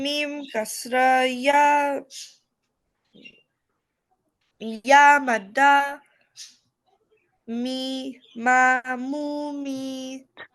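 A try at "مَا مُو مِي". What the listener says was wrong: Yes, good, mashallah.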